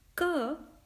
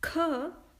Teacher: ka, being alpa prana, is pronounced normally, while kha, being mahaprana, is pronounced with an extra puff of air